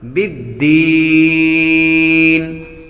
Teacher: حروف مدہ کے بعد عارضی سکون ہو یعنی وقف کی وجہ سے کوئی حرف ساکن ہو جائے تو مد عارض ہوتی ہے، اس لیے اس کو لمبا کریں گے۔